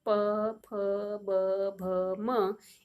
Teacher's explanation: प वर्ग बोलते समय हमारे ओठ आपस में चिपकते हैं, प, फ, ब, भ, म, इसलिए प वर्ग भी ओष्ठ में सम्मिलित है।